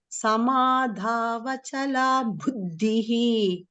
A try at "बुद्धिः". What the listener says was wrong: not bhu, bu.